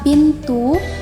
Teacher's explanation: Fonem I atas, tinggi, depan, tak bundar, yang direalisasikan dengan bunyi I pada contoh kata pintu, yang distribusi fonemnya berada di tengah kata.